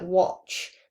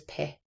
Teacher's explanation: So in a word like watch, that would be wa, and no vowels are deleted here, hence, so that would, if a vowel was deleted, that would be a syllable deletion, but this is just a final consonant deletion of that final consonant ch. That often occurs with plosives.